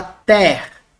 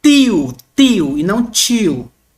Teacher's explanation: Em português, tal, representa o nosso T, como na palavra ter. Não representa um T como um T chiado, como na palavra tio